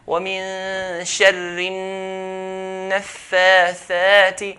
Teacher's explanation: When noon has a shadda, we're going to hold it the longest. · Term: أكمل غنة